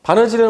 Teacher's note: 리을이라는 게 바늘 뒤에 붙어 있었는데 실제 발음할 때 리을이 이렇게 탈락해 버립니다. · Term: 탈락 현상